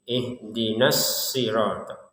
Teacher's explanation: Huruf shad di sini tetap ada tekanannya karena ada tasdid.